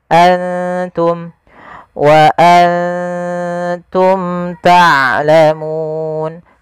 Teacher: nunnya kita samarkan ke huruf ta langsung, seakan-akan kita melafalkan huruf ta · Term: ikhfa